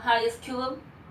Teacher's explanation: cuando la vocal O está repetida dos veces en una misma sílaba, suena como una U alargada